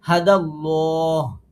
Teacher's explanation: আল্লাহ শব্দে লাম পুর হবে , তিন আলিফ মাদ হবে, যেহেতু পরে আমরা হাতে সাকিন দিয়ে